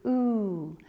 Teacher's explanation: When I make this sound, my lips are forward, fully rounded, and my tongue is at the back of my mouth.